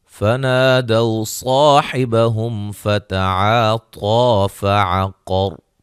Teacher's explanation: طا کو موٹا ادا کریں گے، مد اصلی ہے، قاف کو موٹا ادا کریں گے